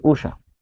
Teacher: এরপর উষা, তাহলে দীর্ঘ মূর্ধন্য ষ, মূর্ধন্য ষ এর উচ্চারণ হয় তালব্য ষ দিয়ে, তাহলে মূর্ধন্য ষ থাকার কারণে তালব্য ষ, আর রস্য দীর্ঘ থাকার কারণে রস্য, এই যে উষা।